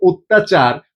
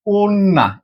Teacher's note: জ ফলা যুক্ত ব্যঞ্জন থাকলে আদির অ এর উচ্চারণ ও এর মত সংবৃত হয়। এটা ও এর মত হবে।